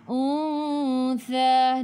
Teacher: Jadi ikhfa hakiki dengung panjang bawa ke sisi huruf tha.